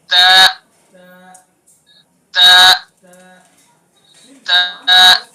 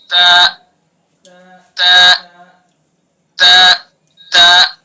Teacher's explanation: सिर्फ जबान की नोक को सना औलिया की जड़ पर लगाएंगे और अदा करेंगे।